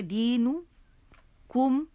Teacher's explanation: نون پہ پیش تو ہونٹ گول ہو جائیں گے